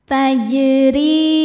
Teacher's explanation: Maka jim ini kita pantulkan bacanya dengan pantulan yang kecil. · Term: Qalqalah Sugra, qalqalah sughra